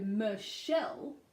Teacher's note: even though it is CH in the spelling, it is SH in the pronunciation, or sh.